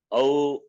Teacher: I, when you say I, even if you observe, I ending with the sound E, right? I, O, when you say O ending with U.